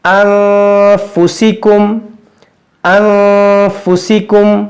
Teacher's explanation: हम यहाँ गुन्नाह कर रहे हैं क्योंकि नून साकिन के बाद एक फा है, इसलिए हम यहाँ गुन्नाह करेंगे।